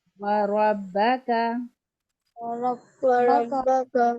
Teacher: را کو یہاں پر موٹا ادا کرنا ہے